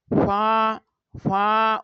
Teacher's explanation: নিচের ঠুটের পেট সামনের উপরের দুই দাঁতের আগার সঙ্গে লাগিয়ে ফা উচ্চারিত হয়